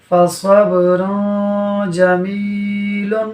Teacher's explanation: اور را پر دو پیش کی تنوین کے بعد جیم حروف اخفاء میں سے ہے، لہٰذا اخفاء ہوگا، یعنی تنوین میں غنہ ہوگا